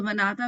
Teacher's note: نون پہ جھٹکا آ گیا، یہ کلکلا آ گیا. اور منعتا، بلکہ منعتا میں اگر آ کو دیکھیں تو میں آ بھی نہیں پڑھا، میں نے وہ پڑھا ہے، جوف کا لیٹر بنا دیا میں نے اس کو، الف پڑھا ہے، کیونکہ میں نے آ کے لیے حلق کو بھی تکلیف نہیں دی.